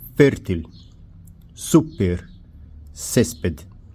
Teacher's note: A penúltima sílaba pronunciada mais forte. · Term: palavras graves ou llanas